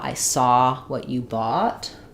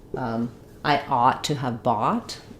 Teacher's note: So in the word bought, letters OU say the ah vowel.